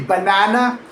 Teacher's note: The middle syllable is stressed and clear. A full a sound. · The middle syllable is stressed and clear, a full ah sound. But the first and last syllables, they are not really ba and na the way they are written.